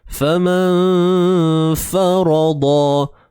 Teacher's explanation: dengung di sini perlu dinipiskan sahaja, tak perlu tebal sebab fa ni huruf yang nipis. Jadi tak perlu sampai famau.